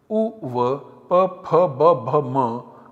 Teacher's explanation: they have Oshtau as the place of articulation